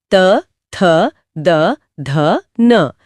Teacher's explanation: यह दंत्य स्थान है। जब जीभ ऊपरी दांतों को छूती है। तब त वर्ग का उच्चारण होता है।